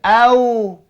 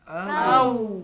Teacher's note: Dua bibir tidak terkatup. Dia pergi moncong, pergi depan pula. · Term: huruf waw